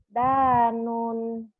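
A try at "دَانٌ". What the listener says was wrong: Pendek. Danun.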